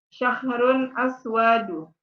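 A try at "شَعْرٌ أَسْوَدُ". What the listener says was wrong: Hati-hati nih. Aswadu enggak. Sya'run aswadu. Pendek wawunya. Sya'run aswadu.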